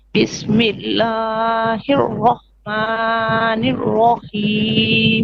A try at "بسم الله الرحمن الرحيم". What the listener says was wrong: Okay, Bismillah, 2 beats only. Don't stretch it longer than this. Bismillahir Rahmanir Rahim.